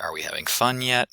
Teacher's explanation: the rest of the sentence the other common intonation pattern is a final rise where there is a raised pitch and increased duration from the last stressed syllable all the way to the end of an utterance